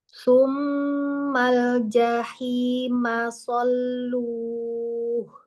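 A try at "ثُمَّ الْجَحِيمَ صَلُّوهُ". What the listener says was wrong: Ya, lam sukun, lam tasdid ini tambah lagi tekanannya, kemudian lamnya kasih bainiyahnya sedikit lagi. Tsummal jah. Jadi suaranya jangan putus Umi. Tsummal jahim sallu. Sallu.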